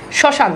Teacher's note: অর্থাৎ শব্দের শুরুতে আপনি মফালা বসালে তার কোন উচ্চারণ হয় না। সামান্য নাসিক্যভবন হয়। অর্থাৎ নাসিক্যবান মানে একটা চন্দ্রবিন্দু চলে আসে।